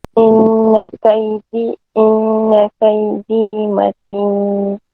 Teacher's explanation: Matin, dia keluar ikut hidung. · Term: gunah